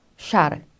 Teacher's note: 샤, 성대가 떨리지는 않습니다. 그래서 무성음이고요.